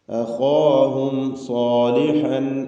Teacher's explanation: അഖാഹും എന്നതിൽ സാക്കിനത്ത മീമുണ്ട്. ആ മീമിനെ ഇൽഹാർ ഷഫവി നൽകി മണിക്കാതെ വെളിവാക്കുകയാണ് വേണ്ടത്.